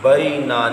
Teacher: نا کو لمبا کیا ہے، باقی کسی اور حرف کو لمبا نہیں کیا